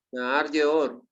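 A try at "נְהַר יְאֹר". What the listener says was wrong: No, pero ojo, no es una hei, no es una, es una het, no una hei. Nahar Yeor. Nahar Yeor.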